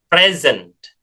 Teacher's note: Jadi kalau hadiah atau kata benda ya, ini dibacanya present ya, pakai Z ya, suara S ini jadi Z